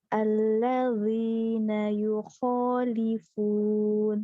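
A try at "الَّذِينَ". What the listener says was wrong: Stop dulu. Zalnya jangan tebal. huruf dot lagi, mana ada huruf dot ya, huruf zo, bukan zal. masih tebal.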